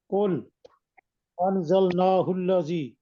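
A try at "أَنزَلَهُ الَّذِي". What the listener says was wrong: انزلنا نہیں ہے، انزلہ الذی.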